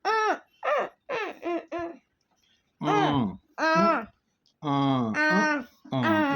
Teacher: ਨਨਾ ਅੱਧਾ ਨੱਕ ਚ ਬੋਲੀ ਜਾਣ ਵਾਲੀ ਆਵਾਜ਼